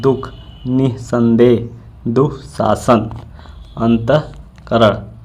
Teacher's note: विसर्ग वाले अक्षर पर बलाघात होता है